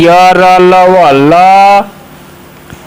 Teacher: ल जो है आपका पार्श्विक ध्वनि है